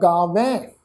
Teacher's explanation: ਗੱਗੇ ਨੂੰ ਕੰਨਾ, ਵਾਵਾ ਅੱਖਰ, ਵਾਵੇ ਅੱਖਰ ਤੇ ਦੁਲਾਵਾਂ ਦਾ ਪਾਠ, ਨਾਲ ਬਿੰਦੀ ਲੱਗ ਜਾਏਗੀ। ਇਹ ਜਿਹੜਾ ਹਾਹਾ ਅੱਖਰ ਹੈ ਜੀ, ਇਹ ਵਾਵੇ ਅੱਖਰ ਦੇ ਨਾਲ ਮਿਲਵੀ ਟੋਨ ਵਿੱਚ ਉਚਾਰਨ ਹੋਏਗਾ